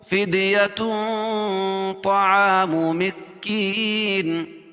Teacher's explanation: کے بعد حروف اخفا کے 15 حرفوں میں سے طا ہے، تو یہاں ناک میں آواز کو چھپا کر پڑھیں گے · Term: اخفا حقیقی